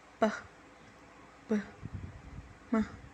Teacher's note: Bilabial sounds are produced with the both lips like p, b, m.